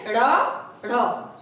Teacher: जीभ पीछे जाती है और मूर्धा को टच करते हुए झटके से आगे आ जाती है, यानी कि उत्क्षिप्त होकर वापस आ जा रही है। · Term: उत्क्षिप्त व्यंजन